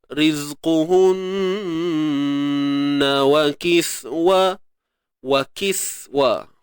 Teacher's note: Nun bersabdu kena dengung sempurna.